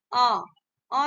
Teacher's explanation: अ जो है आपका अग्र स्वर नहीं है ये पीछ से बोला जाता है